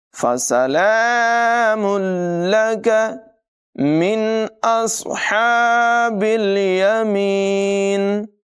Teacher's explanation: یہاں تنوین کے بعد لام حروف غیر معلوم میں سے ہم ملا کر پڑھیں گے، ادغام ہوگا لیکن بغیر غننے کے، غنہ نہیں کریں گے۔